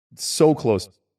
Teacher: He uses a bit of a diphthong for so, but a short one. And then I think he's only using the vowel O for close.